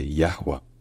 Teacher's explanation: le H au milieu était bel et bien prononcé Yahwa. En hébreu moderne, c'est devenu Yahvé, Yahvé.